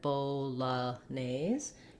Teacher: you can just glide your light l at the beginning of the syllable · the second o is going to be a short reduced vowel it'll sound like a schwa so i find it helpful to break it at bo la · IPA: /ˌboʊləˈneɪz/